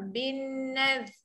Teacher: Bin tu dengungkan sebab ada nun sabdu wajib huna. Bin nadh.